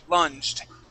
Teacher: this is that g is going to be a j sound